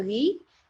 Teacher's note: Kemudian do, di, ro, ri, ya. Karena kalau kita bacanya ri langsung ri, dia jadi tipis ya